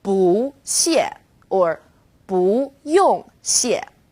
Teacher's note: When 不 is used before another fourth tone, it becomes second tone,